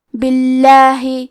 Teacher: کلمت باللہ کیونکہ با کے نیچے زیر ہے تو لفظ الجلالہ کے لام کا حکم ہے ترقیق تو ہمیں حرف اللام کو پتلی آواز میں پڑھنا ہے